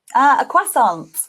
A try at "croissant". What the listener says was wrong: See, we would pronounce that more as a sophisticated French person, and we would say croissant. So the stress is on the second syllable, croissant. Doesn't that sound more sophisticated than croissant?